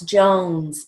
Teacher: I don't really hear a Z. I hear an S.